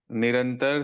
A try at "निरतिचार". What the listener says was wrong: निरतिचार, निरतिचार, निरतिचार, निरंतर नहीं है, निरतिचार।